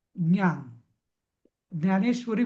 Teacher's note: म्हणताना आपली जीभ दातांना लागते तसं नाही म्हणायचं ती दातांच्या वरची जागा आहे ना त्याला लावून म्हणायची